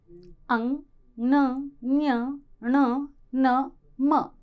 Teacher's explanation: ऐसे वर्ण जिनका उच्चारण मुख और नासिका से किया जाता है वे कहलाते हैं नासिक्य